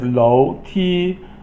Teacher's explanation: Low is second tone, and then Ti is first tone